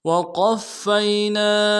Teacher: قاف کو موٹا کریں گے، فا کے ساتھ ملانا ہے، فا کے اوپر تشدید زور دیں گے